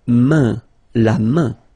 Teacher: this combination A-I-N is quite interesting because it will give you the sound un. So it's really a nasal, it goes in your nose, okay? And it's un.